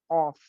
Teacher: زبان کی جو جڑ ہوتی ہے, آئی مین دا لاسٹ پارٹ آف اے ٹنگ, یہ جب اٹھتی ہے اور جب اوپر کے نرم تالو سے, سافٹ پیلٹ سے لگتی ہے, تو وہاں پہ آف ادا ہوتا ہے